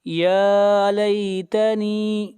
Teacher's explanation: یا لیتنی، یا کے اوپر کھڑی زبر ہے، یا کو کھینچ کر پڑھیں گے ایک الف کے برابر